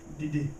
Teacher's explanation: when we're referring to commanding someone to do something or requesting, the verb has a low tone. · So, when he says Didi, it's la, like low tone. So this command is Didi in all green because both syllables are low